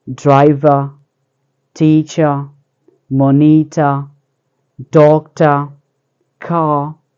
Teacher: the speakers do not pronounce the R sound when it is at the end of a word or when the R sound is immediately after a vowel sound. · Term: non-rhotic pronunciation